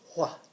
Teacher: when you see it I want you to go wha so it's like you're doing the W but there's a lot of air behind it